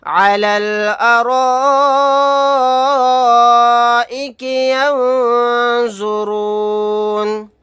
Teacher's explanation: یہاں پر الف مدہ کے بعد حمزہ اسی کلمے میں ہے، یہاں پر مد متصل کا قاعدہ ہوگا، اس مد کو 4 الف کی مقدار کھینچ کر پڑھیں گے، نون ساکن کے بعد زوا ہے، یہاں پر اخفا کا قاعدہ ہوگا، نون کو ساکن بنا کر پڑھیں گے آیت کرنے کی صورت میں۔